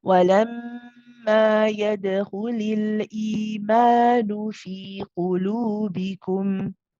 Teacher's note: And then the meme, of course, is the wasut, so making sure that you go from circling of the lips for the ku, relaxing the lips and holding the time for the meme, not too long, not too short.